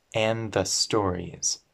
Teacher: This D and the TH connect.